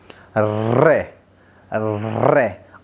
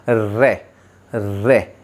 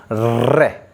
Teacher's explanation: हमारी जीभ जो है वो पहले मूर्धन्य को टकराती है और फिर एकदम से नीचे आ जाती है, जैसे रे। आप किसी भी व्यंजन या किसी भी वर्ण का उच्चारण इस तरह से नहीं कर सकते। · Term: लुंठित